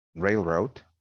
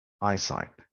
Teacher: and eye and side eyesight as you can tell it is it has primary stress in the first syllable the first word